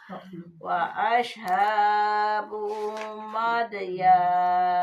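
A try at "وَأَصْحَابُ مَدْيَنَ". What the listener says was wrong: Pendek. Madyan.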